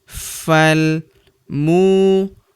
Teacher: Huruf mu kita panjangkan dua harakat karena terdapat wau sukun di depannya